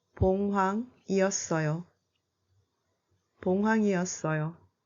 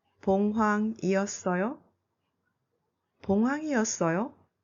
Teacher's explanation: The declarative and interrogative forms are the same in Korean. The only difference is the tone of falling and rising.